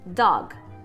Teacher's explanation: essa vogal de apoio que a gente coloca no final de algumas sílabas que na verdade não existe no inglês